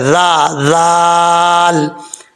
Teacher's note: یہاں پر حمزہ کے بعد جو ذال آ رہا ہے بغیر سیٹھی والا ہے، اس کا مخرج ہے زبان کا سرا اوپر والے دانتوں کے اندرونی کنارے سے لگے تو ذال پڑھا جاتا ہے